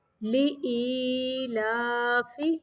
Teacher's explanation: یہاں پہ لامز لی پڑھنا، لے نہیں پڑھنا